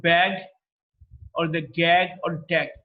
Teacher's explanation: G is a voiced, velar, plosive. Voiced because the vocal cords are held loosely together when the air passes through. There's a lot of vibration in the vocal cords, and it's a plosive. It's a plosive because the air is built up inside the mouth.